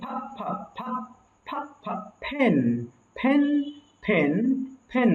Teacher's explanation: ফেন সাউন্ডটা প এবং ফ এর মাঝামাঝি একটা সাউন্ড এটা কিন্তু ফেন পড়বেন না আপনারা আবার ফ্যান না কিন্তু এটা